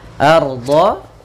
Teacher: ro-nya tebal yaitu ro tafkhim.